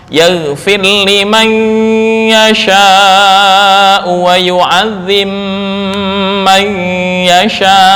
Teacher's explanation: Ini idgham mutajanisain kecil yang disertai gunnah, yaitu idgham ba ke mim.